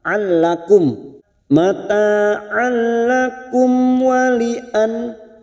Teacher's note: kum mim sukun bertemu waw, idhar safawi kita baca jelas. Mim sukun mendengung hanya bertemu 2 huruf, yaitu huruf mim dan huruf ba.